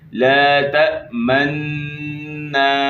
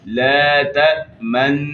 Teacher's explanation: اشمام کا طریقہ یہ ہے کہ ہونٹوں کو غنہ کرتے ہوئے ہونٹوں کو گول کرنا ہے اور غنہ کو جاری رکھتے ہوئے ہونٹوں کو واپس اپنی حالت پر لے کر آ جانا ہے